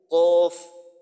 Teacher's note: জিহ্বার গোড়ার থেকে একটু আগে বাড়িয়া বা বাড়াইয়া তার বরাবর উপরের তালুর সঙ্গে লাগাইয়া